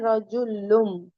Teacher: نون کو میم سے بدل کر غنہ اور اخفا کے ساتھ پڑھنا چاہیے. اس قاعدے کو اقلاب کہتے ہیں.